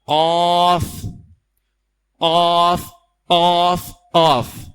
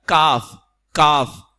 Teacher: زبان کی جڑ نرم حصے سے لگے تو قاف ادا ہوتا ہے، سخت حصے سے لگے تو کاف ادا ہوتا ہے